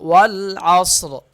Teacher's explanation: والعصر، والعصر، واو کے ساتھ اور لام کے درمیان میں ایک الف لکھا ہوا، یہ الف نہیں پڑھا جائے گا، اور عین اور صاد آپس میں مل جائیں گے کیونکہ صاد ساکن ہے، عین اس کے ساتھ مل جائے گا اور صاد موٹا ہوگا، والعصر۔ اور اگر اس آیت کو اگلی آیت کے ساتھ ملائیں گے تو اس صورت میں یہ را پتلا پڑھا جائے گا اور وقف کی صورت میں موٹا پڑھا جائے گا۔